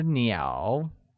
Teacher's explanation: where 鸟, meaning birds, is pronounced with a falling rising tone